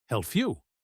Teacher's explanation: The P sound in help often changes to a F sound before Y. Help you. That is assimilation.